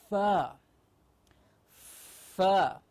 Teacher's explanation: the outside of the lower lip has to go in like that to say, and the air flow has to be continuous and outward to say f. So f, as we've seen now, is a labiodental sound.